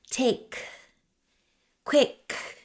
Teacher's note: Make sure that when you say take and quick that the air is blowing out of your mouth.